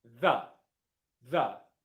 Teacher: The majority of the time, it's pronounced th with the tongue in between the teeth. Th and then with a schwa sound after it.